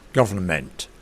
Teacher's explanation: we find the non-reduction of vowels in unstressed syllables